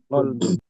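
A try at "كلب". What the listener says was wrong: Kalbun. Laisa kalbun, nam. Bukan qaf. Kaf. Kalbun.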